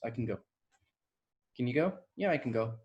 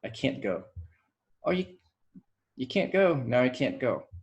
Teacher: can just reduces to a schwa oftentimes